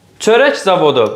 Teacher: Baxın, yenə çörək sözü olur çörəyə, K-yə keçir, amma özündən sonra Z samit gəlib. Sait gəlməyib. Deməli, Y-nin qarşılığı xıştriklə tələffüz olunacaq.